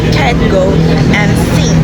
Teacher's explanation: Velar sounds such as K, G, and N are produced when the back of the tongue contacts the soft palate